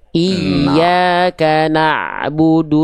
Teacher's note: tinggal di ain sukun, cukup dia sedikit mengalir saja, jangan terlalu kadarnya lama. Na'budu enggak, tapi iyyaka na'budu, jangan na'budu kelamaan.